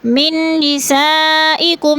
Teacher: من میں نون مشدد ہے، سختی سے جمع کر پڑھیں گے۔ نساء میں مد متصل ہے، 4 الفی مد ہے، کم میں اظہار شفوی۔